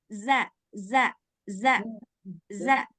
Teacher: Jadi ujung lidah bertemu dengan gigi depan dengan gigi bagian atas bawah.